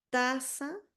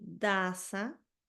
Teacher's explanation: solamente cambio la t con la d y el punto articulatorio de ambas es muy similar está muy cercano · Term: par mínimo